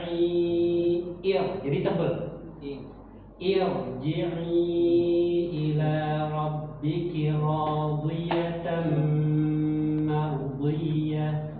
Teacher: kalau ada ra sukun didahului hamzah wasol, itu dia harus dibaca takhfif, harus dibaca tebal.